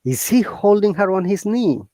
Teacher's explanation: are making a question mark uh tried to use upper intonation that means our voice should go up